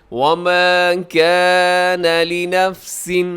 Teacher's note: وما اسے بھی لمبا کیجیے گا، الف مدہ ہے